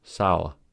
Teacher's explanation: Triphthongs occur in British English due to its non-rhotic pronunciation. That is, in standard British English, the R sound after a vowel in a syllable is not pronounced, and instead is pronounced as schwa, a. For this reason, the word sour is viewed as containing a triphthong in British English, sour. · the word sour is viewed as containing a triphthong in British English, sour. American English, by contrast, is rhotic, meaning that the R sound after a vowel in a syllable is fully pronounced as That is, the schwa belongs to the consonant R sound.